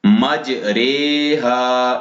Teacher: زبر کو زیر کی طرف اور الف کو یا کی طرف مائل کر کے پڑھنے کو امالہ کہتے ہیں، یعنی امالہ کی را کو اردو کے لفظ قطرے کی طرح پڑھیں گے، یعنی را کھڑا زیر ری نہیں بلکہ رے پڑھیں گے۔